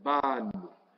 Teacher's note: ¿Dónde está el acento? En la última sílaba.